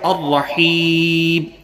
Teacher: اس کے بعد دوسرا ورڈ ہے الرحیم، وہی بات جیسے کہ میں نے عرض کیا کہ الرحیم یہاں کھینچا اس لیے جا رہا ہے، یہاں مد عارض وقفی ہے